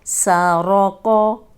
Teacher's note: سا رو، قوف زبر قو، سارو قو، یہ دونوں موٹے ہیں، قوف بھی موٹا ہے لیکن ہونٹ گول نہیں ہوں گے